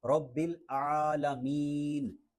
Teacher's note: رب العالی نہیں پڑھنا کیونکہ یہاں پہ عین ہے، حلق کے درمیان سے یہ ادا ہوتا ہے